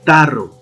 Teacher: dental, mi lengua llega a los dientes, pronuncian la palabra tarro, llega a la parte posterior de los dientes y el aire sale con fuerza